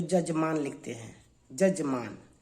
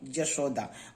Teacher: कभी कभी ऐसा होता है कि य को ज के रूप में प्रयोग करते हैं